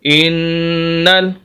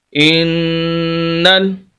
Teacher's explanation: یہاں پر غنہ بھی ہے اور شد بھی ہے، سخت بھی کریں گے اور غنہ بھی کریں گے، ناک میں آواز لے کر جائیں گے غنہ۔ ان، نون زبر لام نل، انل، لام زبر لا، ان اللہ، یہ الف خالی اس کو نہیں پڑھیں گے۔